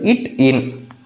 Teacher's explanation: நுனி நாக்கு நுனி எண்ணத்துல படுறதுனால இட் இன் அப்படின்றது பிறக்குது இந்த இத் இத் இது வந்து பார்த்தோம்னா எங்க இருக்கு நுனி நாக்குக்கு மேல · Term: நுனிநாக்கு நுனி அன்னத்தில்